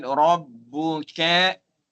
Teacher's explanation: Ra dibaca dengan tafkhim tebal